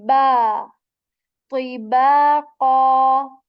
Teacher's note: remember this sound okay okay so I made thisw heavy and ba letter is supposed to be articulated from both of your lips